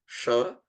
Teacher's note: Sha, like the word Shankara, that is a palatal sound or talavya shabda, in which case you are using the whole of your tongue flat like this and it is touching the upper palate.